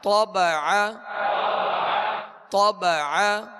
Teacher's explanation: طا کو پر پڑھیں گے اور عین کو درمیان حلق سے ادا کریں گے